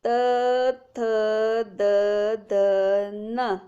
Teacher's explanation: याचे उच्चारण करताना जीभ वरच्या दातांच्या आतल्या भागाला लागली पाहिजे. त थ द ध न. हे काय अवघड नाही आहेत उच्चारणाला. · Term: त वर्ग